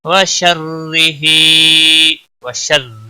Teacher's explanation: را کو زیر کی وجہ سے باریک پڑھیں گے، باقی کسی بھی حرکت والے حرف کو کھینچنا نہیں، ہا کے نیچے کھڑی زیر ہے، ایک الف کے برابر کھینچ کر پڑھیں گے۔